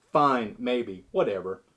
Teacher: A flat or level inflection where we don't have a change in tone can show indifference or disinterest.